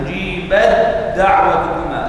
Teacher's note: لا نقرأ التاء ولكن نضغم إضغام متجانسين صغير